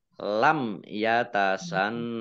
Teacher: mim sukun bertemu dengan huruf ya bacaan izhar syafawi dibaca jelas. Kemudian nun tasdid dibaca gunnah atau mendengung ya ditahan dua harokat.